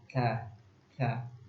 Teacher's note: ketika kita mengucapkan ta itu ada sedikit napas yang keluar